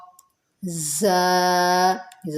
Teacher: زا سیٹی والا حرف ہے، سختی والا